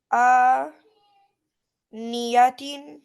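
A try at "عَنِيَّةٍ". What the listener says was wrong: Yes. Exactly. Well done.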